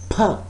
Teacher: the airflow is stopped and there is a pressure behind the articulators and then releases in a burst.